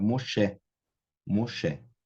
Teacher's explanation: necessariamente a última sílaba é a tônica